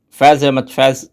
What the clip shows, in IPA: fɛːz ɛɦ.məd̪ fɛːz